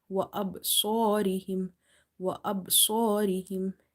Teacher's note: Swad is heavy because this is from the musta'aliya letters, and because of this swad, alif is also heavy.